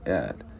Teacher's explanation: cái chữ T á, mình đá lưỡi lên vòm trên